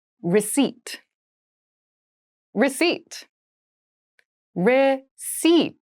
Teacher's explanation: there is a p in the spelling of this word but we do not pronounce it